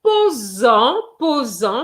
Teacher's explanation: you're going to have a Z sound because an S is between two vowels